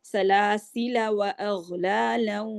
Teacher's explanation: الف جو ہے وصلاً نہیں پڑھیں گے لیکن وقف کرتے ہوئے ہم اس کو پڑھ سکتے ہیں سلاسلا. اور اس کے وقف کرنے کے 2 طریقے ہیں.